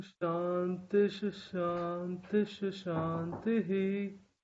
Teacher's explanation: the Visarga takes the sound of half Sh